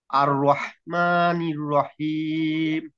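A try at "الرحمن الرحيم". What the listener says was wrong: মাশাআল্লাহ।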